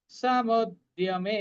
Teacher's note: এই রণ সমুদ্যমে শুধু মেটা দীর্ঘ, বাকিগুলো হর্ষ।